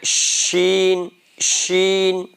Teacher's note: شین جو بیچ زبان ہے نا، زبان آپ دیکھ لیں کہاں سے کہاں تک ہے، زبان کا جو بیچ کا حصہ ہے اس کو آپ اوپر والے تالو میں لگائیں